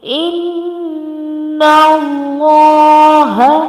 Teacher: we will do the ghunna at this noon and then we match it with lam. Allah's name and Allah's name before Allah's name it's fatta, so we make Allah's name bulky, so it's going to be inna Allah lam with standing madda and ya, so we make it long for 1 second.